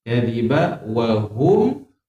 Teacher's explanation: Kenapa hum ini tak dengung? Sebab mim ini ada tanda sukun. Sukun dibaca jelas.